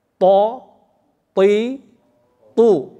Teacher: To termasuk huruf istilah, huruf tafkhim, huruf tebal. Mau fathah, mau kasroh, mau dhammah dia tetap tebal.